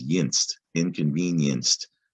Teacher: inconvenienced is tricky because well there's that y sound in the middle but it also sounds like the last syllable is yinst